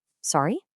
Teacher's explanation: make sure your voice goes up at the very end, almost like you're asking a question.